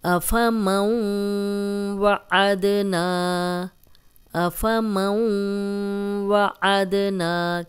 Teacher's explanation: أَفَمَن وَعَدْنَا، أَفَمَن وَعَدْنَا، کیونکہ نون ساکن کے بعد حروف حلقی نہیں ہے، واو جو ہے نون ساکن کے بعد واو آ گیا، اس لیے ہم غنہ کر رہے ہیں اور واو کی ساؤنڈ بھی آ رہی ہے۔ أَفَمَن وَعَدْنَا، عد یہ کلکلہ ہے، 5 حروف میں سے ہے، قاف، طا، با، جیم، دال۔